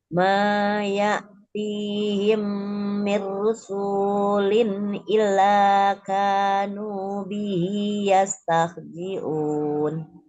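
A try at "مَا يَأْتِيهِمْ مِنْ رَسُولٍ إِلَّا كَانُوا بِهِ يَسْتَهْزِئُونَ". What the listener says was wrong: Sedikit salah harokat, bukan mirusu tapi mirro, ro. Maya tihim mirrosu, ro bukan ruun. Ya, kalau Bunda tilawah jangan satu ayat satu napaskan, sesuaikan dengan kemampuan napas kita.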